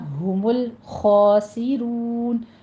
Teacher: لام کو سٹاپ کرتے ہوئے خا کو پور پڑھنا ہے